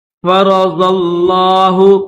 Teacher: قد فرض اللہ، را کو بھی موٹا پڑھیں گے، زواد کو بھی موٹا پڑھیں گے، یہ جو زواد ہے اس کو لفظ اللہ کے ساتھ ملائیں گے، کیونکہ لفظ اللہ کے اوپر تشدید بھی ہے اور کھڑا زبر بھی ہے، تشدید بھی ہے تو زواد کو لفظ اللہ کے ساتھ ملا کر پڑھیں گے